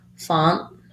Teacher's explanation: the letter o in font has the ah vowel so you might think of that as pha that might help